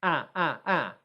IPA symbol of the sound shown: æ